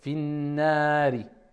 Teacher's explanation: Je déduis que c'est na parce qu'il y a la prolongation du a, la voyelle longue. Le alif, finnari.